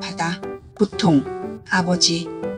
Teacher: 비읍은 입술을 붙였다가 살짝 떼면서 내는 소리예요. 발음할 때 성대 울림이 거의 없지만 단어의 중간이나 모음 사이에 올 때는 비처럼 약하게 울리기도 합니다. 힘을 주지 않고 부드럽게 부 하고 내는 소리입니다. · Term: 예사소리